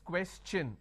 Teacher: When I have the word question, the tion becomes ch, n. So it becomes question.